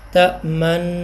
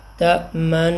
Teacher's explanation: روایت حفص کے مطابق نون کا نون میں ادغام کر دیا جاتا ہے، اور نون پر غنہ کرتے وقت دوران غنہ ہونٹوں کو گول کرنے کو اشمام کہتے ہیں، جیسے تأمن، یہ ہو گیا غنہ۔